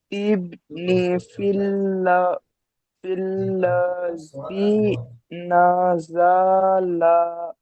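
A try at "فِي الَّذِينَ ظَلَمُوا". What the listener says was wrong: দলামু, এটা দা হবে না, এটা শোনেন ঠিক হয়েছে, কিন্তু এটাতে জলামু, দা আলাদা, এটা জলামু।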